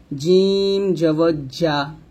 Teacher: জিমটা যখন উচ্চারণ করবো জিহ্বার মধ্যখান তার বরাবর উপতালের সঙ্গে লাগবে,